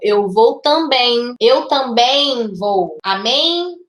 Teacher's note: quando a palavra termina em em a gente acaba inserindo uma letra i não uma letra né um som de i também isso acontece isso se chama resso nasal Tá mas e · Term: ressoo nasal